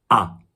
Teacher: your tongue is quite a long way from the roof of your mouth see how much space there is for my pencil ah but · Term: open vowels